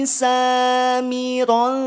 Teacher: tanwin fathah bertemu dengan huruf Ta Maka tahan dua harakat hukumnya ikhfa